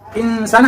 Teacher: nun sukun ketemu sa, itu namanya ikhfa ya, dibaca berdengung samar ya